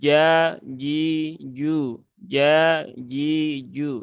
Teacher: Jadi tidak ada ee percikan udara ketika mengucapkan ja ji Ju nah begitu Tetapi dia lebih bersih ja ji Ju ja ji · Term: huruf Jim, jahar